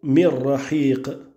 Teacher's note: Et on aura ici, concernant les règles du Noun, al-Idram, bila runna, sans la runna, pour ta parole, mir rahiq, avec l'Idram du Noun dans le Ra